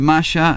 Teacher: nosotros tenemos una variante que denominamos yeísmo, por lo cual para nosotros maya, de la cultura maya, y maya, de la prenda que se utiliza para ir justamente a la playa, es lo mismo